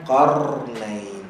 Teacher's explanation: getaran qarnain nampak dia tak ada e ataupun a yang keluar selepas dia